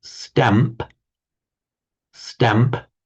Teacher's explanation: The mouth automatically goes for the m to the same position where the p will be coming out.